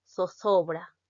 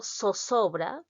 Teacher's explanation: la articulación interdental de la Z con la articulación alveolar de la misma letra, tal como si se tratara de la S.